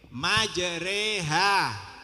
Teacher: bacaan imala yang memberikan bunyi patah pada kasrah